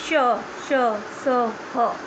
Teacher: जैसे श, श, स, ह। आपकी जीभ टक्कर खा रही है ना, श घर्षण हो रहा है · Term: ऊष्म व्यंजन